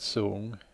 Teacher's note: The word sung begins with a high-class consonant. It has a long vowel and ends with the nasal consonant nga. There is no tone marker, so this would be a low-rising tone.